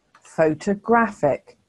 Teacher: here the third syllable is stressed so can you hear that the uh sound is in the second syllable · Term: schwa